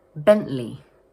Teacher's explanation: some native British speakers dropping the middle 't' sound and instead using what we call a glottal stop.